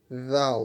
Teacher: the origin of dal is we use tip of the tongue and upper front teeth.